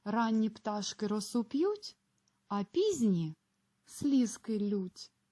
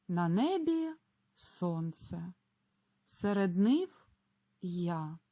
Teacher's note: у першому і другому реченні на місці паузи ми зробили вичікувану перерву а далі тон підвищується